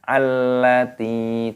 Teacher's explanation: Perhatikan di sini ada hamzah wasol, ini diganti dengan fathah, maka dibaca Allah. Lamnya tasdid, maka dimasukkan, diidghamkan, ditekan. Allati, taknya dibaca panjang, ada ya sukun, mad tabi'i 2 ketukan, jangan panjang-panjang.